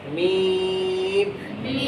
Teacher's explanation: मीम का दरमियानी हर्फ या है उसको लंबा करेंगे।